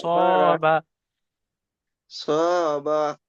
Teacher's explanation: করে আলিফের ডানদিকে জবার আসছে তাই জবারটি হারাকাত হারাকাত আলিফ মাদ্দা আলিফ মাদ্দাকে এক আলিফ পরিমাণ টান দিয়ে পড়তে হয়